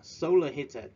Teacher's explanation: We stress at the first syllable of the solar and heated.